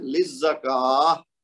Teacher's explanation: کاف کے اوپر چونکہ کھڑا زبر ہے تو ہم نے اس کو دو حرکت کھینچ کے پھر ہا کی آواز نکالنی ہے